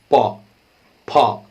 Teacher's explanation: प फ जब बोलेंगे दोनों होठ सटेगा, कोई ऐसा नहीं है जो मुंह खोलकर जो है प प बोल रहे।